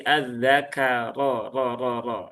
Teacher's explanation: Kemudian ini rnya tebal ya. Tafhim zakaro.